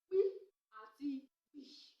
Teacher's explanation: ìró tí a pè nígbà tí ètè méjèèjì pàdé, ẹ̀yìn ahọ́n sì súnmọ́ bá àfàsé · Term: Afàfàséfètèpè